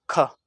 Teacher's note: ख के उच्चारण में अधिक वायु निकली, इसे इसलिए बोल दिया इसे महाप्राण